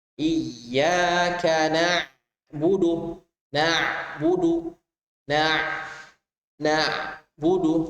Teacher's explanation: Maka udara ketika kita mengucapkan ain, udaranya akan tertutup. A. Lebih jelas lagi ketika kita dalam keadaan sukun.